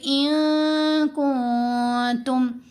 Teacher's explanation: تو کاف بھی حروف اخفا میں سے، تا بھی حروف اخفا میں سے، تو دونوں کے اوپر ہم نے اخفا کیا، نون کی آواز کو ناک میں چھپا کر پڑھا